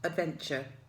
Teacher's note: The ch sound is actually made by the t.